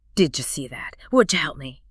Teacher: When a D sound is immediately followed by a Y sound, the tongue tries to make both shapes at the same time and they merge to create a J sound, like in the word judge.